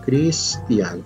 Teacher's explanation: Débil, fuerte, la I, la A, es un diptongo, no se separa.